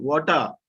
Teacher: I already told you R should be removed.